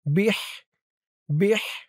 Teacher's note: হার আওয়াজটা গলার ভিতর থেকে চিকুন হয়ে বের হবে।